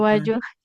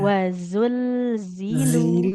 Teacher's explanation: Zai yang keduanya sudah bagus Bu. Tapi za yang pertamanya jadi jim.